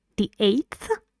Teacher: the underlined part shows where the speaker B uses a surprised intonation a Rising one on this part the eighth so eighth is one syllable the vowel in it is a